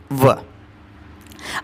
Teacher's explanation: व का उच्चारण स्थान दंत प्लस ओष्ठ से